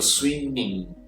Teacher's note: eu não pronuncio esse G no final.